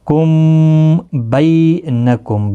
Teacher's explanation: بی یا لین ہے، تھوڑا نرمی کے ساتھ کھینچ کر ادا کریں گے